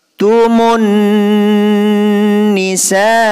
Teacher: Alif ini huruf mad bertemu hamzah dalam satu kalimat, panjangnya 5 harokat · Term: mad wajib muttasil